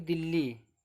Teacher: जैसे कोई शब्द लिखो, जैसे यहाँ एग्जाम्पल लेते हैं, जैसे अगर यहाँ लिखोगे दिल्ली, अगर दिल्ली को बोलोगे भी और लिखोगे भी तो ये आधा ला और ये पूरा ला, इन दोनों का उच्चारण एक साथ होगा। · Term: व्यंजन गुच्छ